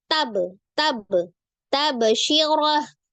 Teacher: langsung disukunkan ke huruf ba langsung mantul